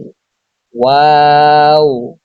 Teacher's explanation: তারপর ওয়াও দুই ঠুটের গুল করে অর্থাৎ দুই ঠুট গুল করে সামান্য খোলা রেখে উচ্চারিত হয় ওয়াও